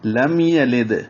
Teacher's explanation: لام کو میم سے ملائیں گے، لام باریک پڑھیں گے، میم پہ اظہار کریں گے